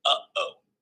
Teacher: In the production of a glottal stop, the glottis is closed and the arytenoids are held together, completely stopping the airflow momentarily. When the glottis opens, the air is released, creating the characteristic sound of a glottal stop, like the catch in the throat you might hear in the middle of uh-oh.